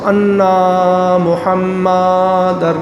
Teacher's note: انا کو بھی لمبا کرتے ہیں منہ کھول کے، اور محمد کو بھی لمبا کر دیتے ہیں منہ کھول کے. یہ غلط ہے.